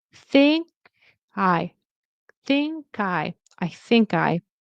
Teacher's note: The T is optional. I feel like I pronounce it more as a glottal stop.